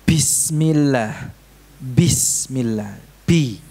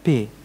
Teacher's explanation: Kalau ba ini diucapkan dengan menahan nafas, kalau P ada nafasnya kan?